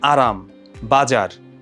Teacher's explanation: জিওভার যে অগ্রভাগটা সেটা হচ্ছে কম্পিত হয় এবং এটা যেটা হয় যে দন্তমূলকে দাঁতের যে মূলটা থাকে ওখানে একাধিকবার খুব দ্রুত আঘাত করে এজন্য হচ্ছে আমরা এটাকে বলে থাকি যে কম্পনজাত ধ্বনি যেমন আরাম